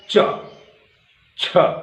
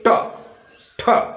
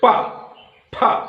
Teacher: आप बोल रहे हैं च छ, देखिए दबाव बन रहा है, च छ, बोलिए ट ठ, बोलिए प फ, पूरा दबाव एकदम चिपक रहा है, फिर छोड़ रहा है